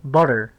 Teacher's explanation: the 2 T's in butter make the voiced alveolar tap instead of a T sound, you know, the voiceless alveolar plosive.